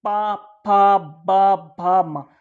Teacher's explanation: ओष्ठ, यानी होठों का स्पर्श। · पा में जो है आपके दोनों होठों का मिलन होगा